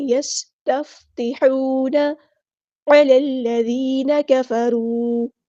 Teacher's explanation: یستفتحون علی الذین کفروا، لام کو ہم نے لام کے ساتھ ملا دینا ہے، حمزۃ الوصل ہمارا ڈراپ ہو جائے گا